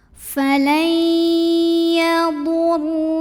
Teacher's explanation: Lam pada lafaz Allah atau lam jalalah dibunyikan secara tafkhim karena huruf sebelumnya barisnya di atas. Jadi bacanya tebal, pangkal lidah diangkat.